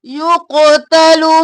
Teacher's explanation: قاف موٹا بھی قلقلہ بھی